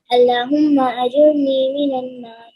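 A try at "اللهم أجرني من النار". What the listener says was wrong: اچھا پتہ کیا ہے، جب اللہ کہیں گے نا تو تھوڑا سا اللہ کو موٹا کہیں، ٹھیک ہے.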